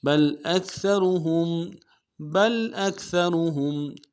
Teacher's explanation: اکثرہم میں سا کو باریک ادا کریں گے، اور را کو موٹا ادا کریں گے، ہا کو میم ساکن کے ساتھ ملانا ہے، میم ساکن غنہ کریں گے.